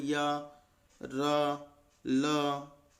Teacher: ऐसे व्यंजन जिनका उच्चारण करते समय जीभ मुंह के किसी भी हिस्से को पूरी तरह से स्पर्श नहीं करती है , और न ही वे स्वरों की तरह स्वतंत्र रूप से उच्चारित होते हैं। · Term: अंतस्थ व्यंजन